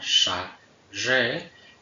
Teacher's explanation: entre las alveopalatales fricativas tendríamos la sha y la re, una sorda y otra sonora